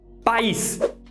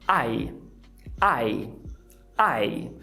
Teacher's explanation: Na palavra país, você tem duas vogais, A, I. Enquanto na palavra pais, esse A e esse I, eles saem de uma vez só.